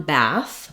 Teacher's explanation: when we have a singular one bath we always use the voiceless th sound